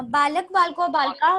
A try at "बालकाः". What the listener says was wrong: बालक नहीं, बालका है। बालका है, विसर्ग न है।